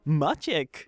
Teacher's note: A is the front low unrounded vowel that is very common in Polish